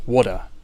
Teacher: with a flap T and no R at the end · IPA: /ˈwoːɾə/